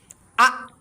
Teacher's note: এই হামজা উচ্চারণ শক্তভাবে উচ্চারণ হবে। হলকের মাঝতে শক্তভাবে আ এরকম ভাবে উচ্চারণ হবে